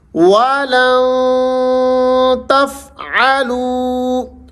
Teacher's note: لن کے اوپر آپ نے غنہ کرنا ہے